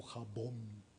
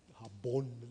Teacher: el yucateco tiene oclusivas plenas, que eso tiene que ver con la articulación del maya, entonces es algo como jabón, es como jabón, no es una B fricativizada, ¿no?